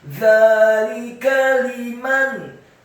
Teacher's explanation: Dzalika, dzanya dibaca tipis, tarqiq, lidahnya agak keluar sedikit, fathah dua harokat karena harokatnya tegak. Kemudian lamnya dibaca tipis, kasrah satu harokat, kafnya dibaca tipis, fathah satu harokat